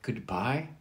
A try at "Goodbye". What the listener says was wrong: No, not a question. Goodbye.